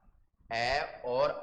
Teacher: अ का मतलब अ और आ का उच्चारण स्थान कंठ है।